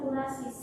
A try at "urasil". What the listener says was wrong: Sitosin dan urasil. Bukan S ya.